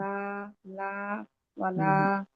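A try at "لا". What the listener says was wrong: হ্যাঁ, এখন এখন যেটা হয়েছে, মুখটা ছোট হয়েছে কিন্তু ওই যে জিহ্বাটা এখনো রিল্যাক্স হয় নাই, ওটা ট্রেনের ব্যাপার তো।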